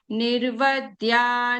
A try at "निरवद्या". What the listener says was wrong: Bhagini, it is Niravadya Nirantara. So the ra is full.